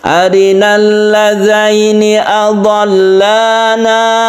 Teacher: arina ini aslinya panjang, tapi kalau bertemu dengan al yang merupakan hamzah wasl maka menjadi pendek, langsung ke tasydid lam.